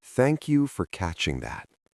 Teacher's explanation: Notice how my voice does not go up at the end. When we are nervous and apologizing, our pitch usually rises.